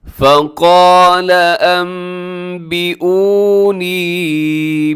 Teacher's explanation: نون ساکن اور تنوین کے بعد با آ جائے، تو یہاں پر نون ساکن ہے، اس کے بعد با ہے، تو نون ساکن کو ہم میم کے ساتھ چینج کر دیتے ہیں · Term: اقلاب